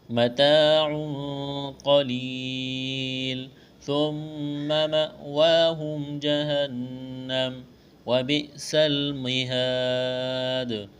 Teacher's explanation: مہاد، الف مدہ ہے، ایک الف کے برابر کھینچنا ہے، وقف کریں گے، دال ساکن ہو جائے گی، دال پر قلقلہ کریں گے۔ حروف قلقلہ 5 ہے، قاف طا با جیم دال، ان 5 حروف پر جب جزم آ جائے یا ان پر وقف کیا جائے تو ایسی صورت میں ان پہ قلقلہ کیا جائے گا۔